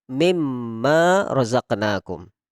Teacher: Ketika ada nun sukun bertemu dengan mim, maka langsung kita tanpa membaca nunnya menjadi mimma razaqnakum.